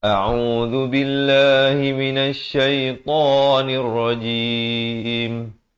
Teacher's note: Hamzah di pangkal kerongkong, ain di pertengahan kerongkong dengan baris dhammah 2 harakat